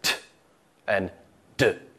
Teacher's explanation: you can tell the tip of your tongue is on that alveolar ridge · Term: Alveolar sounds